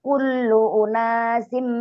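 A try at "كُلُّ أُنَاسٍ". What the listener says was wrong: Awas kullu, kenapa dipanjangin, emang ada matnya?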